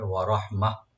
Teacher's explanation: এখানে আমরা যেমন থামবো, গোলটা এটা হা হয়ে যাবে, সাকিনওয়ালা হা হয়ে যাবে